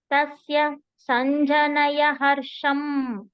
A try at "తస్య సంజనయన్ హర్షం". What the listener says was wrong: నయ ఒక్కటే చెప్తున్నారు ఆ ఎన్ కూడా వినిపించాలి